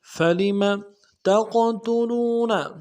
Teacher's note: قاف کو موٹا کریں گے، اور قلقلہ بھی ہوگا قاف ساکن میں